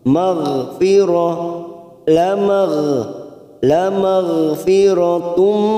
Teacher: hati-hati ada huruf gha sukun ghain jangan sampai memantul karena bukan qalqalah kita tahan